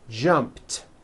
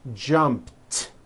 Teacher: So, when you put it in the past tense, all you do is add a T. So jump becomes jumped with a t sound at the end.